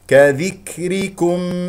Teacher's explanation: كم هذه الكاف مضمومه نضم الشفتين فيها